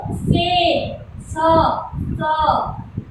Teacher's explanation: दांत के अग्र भाग में पीछे की तरफ टकराती है जीभ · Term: दंत्य स